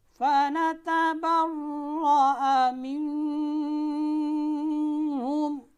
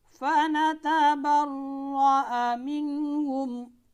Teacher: ان میں سے کوئی بھی حرف آ جائے تو نون ساکن اور نون تنوین کو بغیر غنہ کے ظاہر کر کے پڑھیں گے